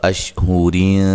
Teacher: جب ملا کے پڑھیں گے تو را باریک ہوگی اور نون تنوین کا اخفا ہوگا